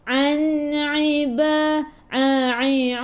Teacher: An jaga-jaga daripada kerongkong, bukan daripada hidung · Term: huruf Ain